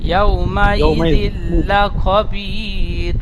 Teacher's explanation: তানবিনের পরে ইয়ার মালুনের 6টি অক্ষরের মধ্যে লাম এসেছে, তাহলে তানবিনটি বিনা গুন্না হবে। ইয়াউমাইযিল বলে গুন্না হবে না।